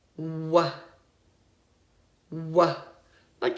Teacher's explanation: the W sound what we only use our lips